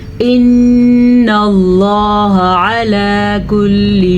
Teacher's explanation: ان اللہ، نون کے اوپر غنہ کریں گے کیونکہ نون پہ شد ہے. لفظ اللہ کو پر موٹا کر کے پڑھیں گے کیونکہ لفظ اللہ سے پہلے نون پہ زبر ہے